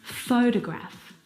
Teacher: the first syllable is the stressed syllable. You can hear it very clearly.